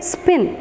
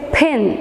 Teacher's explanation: especially initially it comes along with a puff of air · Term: aspirated sound